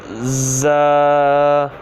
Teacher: زا کو سٹی کی آواز کی طرح پڑھنا ہے